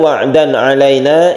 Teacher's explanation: Kita tidak mendengungkan dan tidak panjang. Wa'dan alaina ini pendek saja dan harus jelas suara dari tanwin itu. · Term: izhar halqi